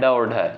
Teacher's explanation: ड और ढ, ये आपका मूर्धा से उच्चारित होने वाला वर्ड है।